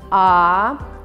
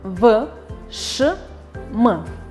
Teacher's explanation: При произнесении звука А воздух проходит свободно, а при произнесении звуков в, ш, м, струя воздуха во рту встречает преграду